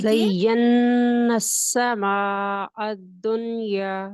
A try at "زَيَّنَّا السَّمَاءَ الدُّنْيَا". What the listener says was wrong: شاباش، گڈ.